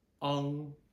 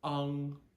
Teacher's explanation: It's ah, open wide, ah, plus an NG ending.